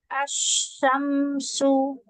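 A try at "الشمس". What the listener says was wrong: Antara shin sama sin. Ayo, jangan sama. Asy-syamsu. Asy-syamsu.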